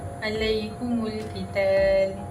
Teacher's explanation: Imam Hamzah dan Kisai akan membaca mim jamak dengan mendhamahkan ha dan mim